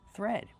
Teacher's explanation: We have the th making the voiceless sound th with air plus the r th.